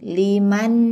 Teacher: ujung lidah bertemu dengan gusi 2 gigi seri atas, bukan ditutup.